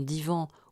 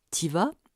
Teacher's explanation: occlusives alvéolaires qui peuvent être sonores comme dans divan ou sourdes comme dans titiva